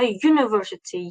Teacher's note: lekin aytilishida, talaffuzda university y bilan boshlayapman. Tovush y, undosh tovush bo'lganligi uchun uni oldidan biz artikl a qo'yilishimiz kerak.